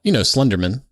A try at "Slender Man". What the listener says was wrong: Why do you say it like that? Isn't it Slender Man? You said like gentleman.